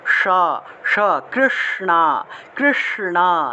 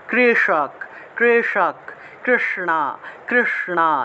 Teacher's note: আমাদের মুখের ভিতরের জিহ্বাটা উল্টে যায়, উল্টে উপরের দিকে মূর্ধা স্পর্শ করে, জিহ্বা উল্টালে পরে উপরের দিকে যে জায়গাটা স্পর্শ করছে সেটা হলো মূর্ধা, তাহলে সা উচ্চারণটা হবে সা, অর্থাৎ জিহ্বা উল্টিয়ে মূর্ধন্যস্য উচ্চারণ করতে হয়। জিহ্বা উল্টিয়ে স উচ্চারণ করলে যে উচ্চারণটা আসে সেটা হলো মূর্ধন্যস্য উচ্চারণ।